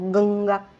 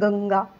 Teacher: या अनुस्वाराचा उच्चार स्पष्ट खणखणीत होतो आणि या अनुस्वाराचा उच्चार नाकातून होतो